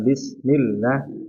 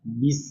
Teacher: Terutama sin. Sinya dialirkan sempurna. Jangan bismillah tapi bis.